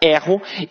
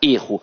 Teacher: o verbo tem a pronúncia aberta erro e que o substantivo tem a pronúncia fechada erro